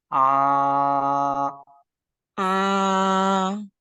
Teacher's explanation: Jadi jangan diganggu dengan pita suara. Pita suara posisinya tetap terbuka selama kita ucapkan huruf ain. Dan ini kesalahan yang paling terjadi jika diucapkan huruf ain, kita melakukan atau menggunakan pita suara.